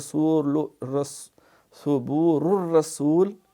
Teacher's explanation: یہاں ثبور الرسول یہاں پہ ادغام ہے بغیر غنہ کے